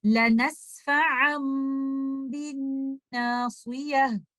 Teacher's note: We will change the noon sakina hidden in tanween into meme, and there will be no trace, no sound of sakin noon. The makhraj of letter meme is from two lips. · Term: iqlab